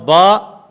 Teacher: یہ دونوں ہونٹوں کے تری والے حصے کے ملنے سے ادا ہوتی ہے